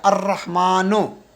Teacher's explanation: الرحمن را زبان اوپر جا رہی ہے تو اس لیے الف جو ہے وہ براہ راست را سے مل جائے گا اور یہ لام جو ہے سائلنٹ ہو جائے گا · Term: شمسی حروف